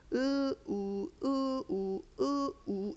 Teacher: 입술만 평평하게 찢어졌다가 우 하면서 동그랗게 말렸다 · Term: 둥근 입술